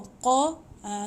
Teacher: qa ni macam jitu bunyi dekat anak tekak